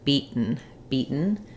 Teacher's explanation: Americans will say beat where they don't release that t · both of these will have a stopped T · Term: unreleased T, syllabic end